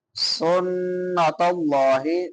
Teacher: سین سیٹی والے حروف میں سے ہے اور بعد میں نون مشدد ہے، شد والا نون ہے، یہاں پہ غنہ کریں گے